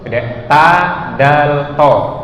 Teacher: Itu makhraj hurufnya adalah ujung lidah ke pangkal gigi atas. Kalau ini benar-benar ke pangkal gigi atas.